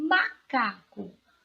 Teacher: Observe a sílaba tônica é cá